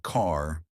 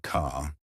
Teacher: Unlike British English, Americans love their R sounds, but they pronounce them softly. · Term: soft R sound